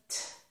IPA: t